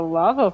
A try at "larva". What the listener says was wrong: Larva. Not lava. Larva, with an R.